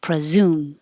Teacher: the pre is not stressed so the E changes to uh presume and you need a good Z in there presume so